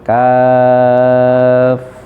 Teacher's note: Kaf itu panjang ya, 6 harokat.